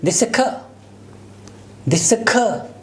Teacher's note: whenever ra sound in British English especially, it comes at the end of a word, it is not pronounced